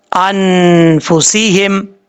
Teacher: نون ساکن کے بعد فا آ رہا ہے، یہاں پہ اخفا کریں گے، اخفا کا غنہ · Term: نون ساکن کا اخفا